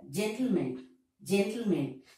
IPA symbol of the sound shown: mən